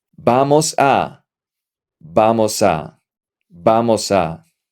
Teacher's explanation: You connect the S and the A.